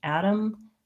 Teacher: So a flap T sounds basically like a light D. I'm not saying Adam with a strong D.